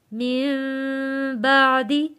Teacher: نون ساکن کے بعد جب حرف با آتا ہے تب ہم نے غنہ ادا کرنا ہے ، من نہیں پڑھنا، من پڑھیں گے، من غنہ ادا ہوگا،